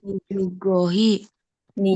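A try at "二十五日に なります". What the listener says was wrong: Nichi, Nichi bukan hi ya. Nijugo Nichi ni narimasu gitu.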